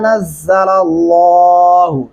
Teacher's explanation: लल्लाहु लाम मोटा पढ़ेंगे